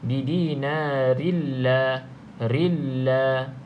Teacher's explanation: jadinya idgham, iaitu masuk dalam ra. Tapi idgham tu dengan bila gunnah, tanpa dengung.